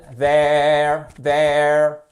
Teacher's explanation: dans there, vous avez un TH hard, vous faites vibrer les cordes vocales